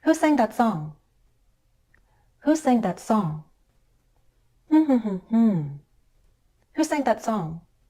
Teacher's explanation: now we'll Glide down on a single stressed syllable